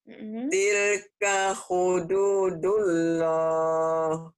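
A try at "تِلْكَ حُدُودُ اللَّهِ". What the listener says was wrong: Jangan dulu, si dulu mah lagi ke pulang kampung. Dulu ada W-nya, jangan dulu, dulu.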